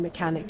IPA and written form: mə'kænɪk (Mechanic)